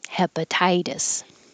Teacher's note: Anything that ends with itis is going to be 2 syllables, stress on the first syllable, itis, the T changing to a D.